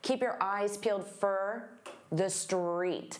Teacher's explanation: And for also becomes very unstressed for.